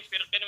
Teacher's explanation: یعنی را ساکن ہے تو را ساکن سے پہلے بھی کسرہ اور را ساکن کے بعد بھی کسرہ، تو اس وجہ سے باریک پڑھنا جائز ہے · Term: بین الکسرتین